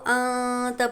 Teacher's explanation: اسی طرح ہم پہچانیں گے کہ تنوین اور نون ساکن کے بعد اگر یہ اخفا کے 15 حروف میں سے کوئی بھی حرف آئے تو نون کی آواز کو ہم کو ناک میں چھپا کر پڑھنا ہوگا